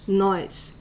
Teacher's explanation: there's an i between the O and the S noise and you also can hear the s a little more like sh